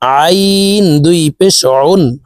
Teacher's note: আইনের মাখরাজ হলকের মধ্যখান থেকে হবে